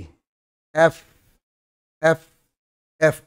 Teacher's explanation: উপরের দাঁতটা নিচের ঠোঁটের ভেজা পাটে লাগবে। আমরা বলি এফ, এফ না, কথাটা এফ না, এফ।